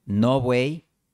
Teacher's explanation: El sonido [β] es una aproximante bilabial.